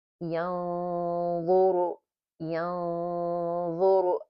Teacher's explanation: the ghunna is heavy because the next letter is dha. Dha itself, it's a heavy letter. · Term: heavy ghunna